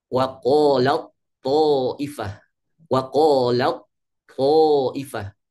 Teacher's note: Taknya sudah hilang bunyinya, sudah kalah dengan huruf to. Ya sudah idgham, sudah masuk ke huruf to.